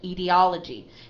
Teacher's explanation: The first stress, the main stress, is on the third syllable, and the secondary stress is on the first syllable.